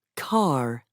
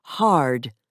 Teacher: most Americans also pronounce the r at the end of words for example car and before a consonant for example hard